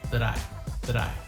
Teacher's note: It's a very fast, flat T, sounds like a D